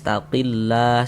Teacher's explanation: huruf lam jalalahnya itu kita baca tipis. Kita baca tarkik. Sehingga kita baca wal yattaqillah.